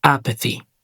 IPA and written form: ˈæpəθi (Apathy)